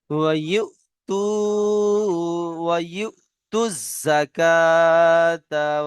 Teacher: সাকিন আলা হামজা ঝটকা দিয়ে পড়তে হয়